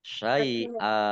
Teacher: Mat iwad dibaca panjang 2 harokat.